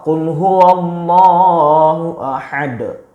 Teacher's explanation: Nah, ahad harus ada de, itu qalqalah ya.